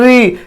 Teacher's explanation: री यानी हमारे जीभ में कंपन आ रहा है, इसे मूर्धन्य कहते हैं। जीभ में हमारे जब कंपन होगा इसे मूर्धन्य वर्ग रखेंगे।